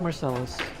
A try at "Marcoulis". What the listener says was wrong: Marcoulis. Marcoulis. I don't know, but it's a K, not a C. unless you can get a K to make a S sound, you done messed up.